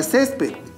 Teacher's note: tiene dos sílabas y la mayor fuerza de voz se encuentra en la penúltima sílaba como ésta termine en una consonante que no es ni n